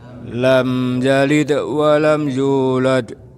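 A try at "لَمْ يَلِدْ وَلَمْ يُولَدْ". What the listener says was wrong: Baik Bapak, sudah Pak.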